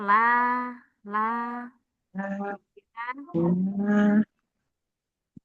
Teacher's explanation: Tepi lidah kena bagian depan la. La la. Masuk ke bagian ujung lidah kena ujung langit-langit atas.